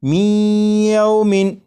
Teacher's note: یہ جو آواز ہے می ای، یہی ادغام ہو رہا ہے، اور ادغام اس طرح کہ نون ساکن کو یا میں شامل کر کے پڑھا جا رہا ہے